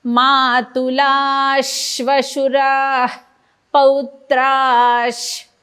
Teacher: मातुलाश श्वशुरा श्वशुरा पौत्राश पौत्राश. बघा, पहिला जो विसर्ग आहे त्याच्याबद्दल श आहे अर्धा, शेवटचा अर्धा श आहे आणि मध्ये श्वास सोडायचा आहे